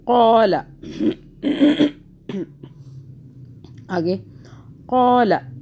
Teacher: لام کو نہیں کھینچنا، آگے کچھ بھی نہیں کھینچنے کے لیے